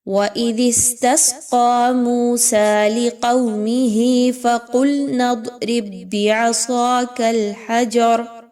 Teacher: اس میں دیکھیے تو سب سے پہلے فَقُلْنَا میں قاف اور پھر ضاد اس کو موٹا کر کے پڑھیے